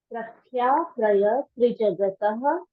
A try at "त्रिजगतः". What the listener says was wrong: तह नहीं बोलना है ना दीदी, तह नहीं ना, ह साइलेंट हो जाता है, ठीक है।